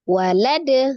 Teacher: Ketika diwakafkan maka menjadi sukun. Ketika huruf dal disukunkan maka menjadi dipantulkan ya, qalqalah. · Tapi tetap dengan tidak berjedah ya. Cara mengucapkan dal qalqalahnya dipantulkan, bukan di tambah hamzah sukun di belakangnya ya. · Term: qalqalah kubra